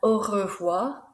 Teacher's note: au revoir, that R sound is rolled, if you can roll it. If not, it's au revoir, that's fine.